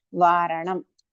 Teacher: Again, Na, deep Na. You have to roll your tongue inside.